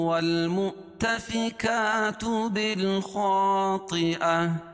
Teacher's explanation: بالخا یہ الف نہیں پڑھی جائے گی، با کو لام میں ملائیں گے اور اس کے بعد حروف قمری کے 14 حرفوں میں سے خا ہے، خا کو موٹا پڑھیں گے کیونکہ حروف مستعلیہ میں سے الف سے پہلے زبر ہے تو الف مدہ، طیعہ گول تا کو وقف کی حالت میں ہائے ساکنہ سے بدل دیں گے۔